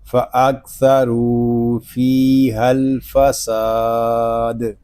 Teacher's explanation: وقف میں قاعدے ہوں گے مد عارض، دال ساکن میں کلکلا اور وقف بالاسکان۔